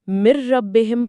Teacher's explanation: نون بھی غائب اور ناک کی آواز بھی غائب